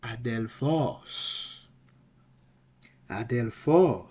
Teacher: the breathing Mark is on Alpha and it's a smooth breathing Mark so there will be no h vocal H sound it's going to be ad Del phone ad